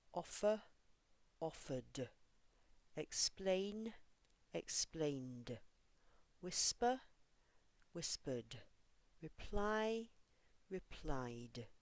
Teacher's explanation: words that end with a voiced sound. No extra syllable, the ending sounds like d.